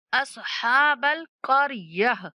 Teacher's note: जब भी ये गोल ता के ऊपर वक़्फ़ करना पड़े, तो आपने इसको क़रियत नहीं पढ़ना, क़रयह पढ़ना है। गोल ता को हा से बदल देंगे।